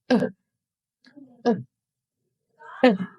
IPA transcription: ə